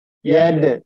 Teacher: Dalnya itu sukun, maka itu qalqalah sugro. Dalnya harus dipantulkan. Yad. Karena dia sukun, maka dalnya harus dikasrokan.